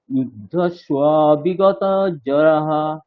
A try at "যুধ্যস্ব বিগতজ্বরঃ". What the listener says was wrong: জরহ নয়, জ্বরহ। জুয়া, বর্গীয় জুয়া বকার।